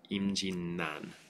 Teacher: Instead of the two R's becoming an L sound, they become an N sound.